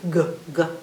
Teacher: You can feel that sound G, G way in the back of your throat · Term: hard sound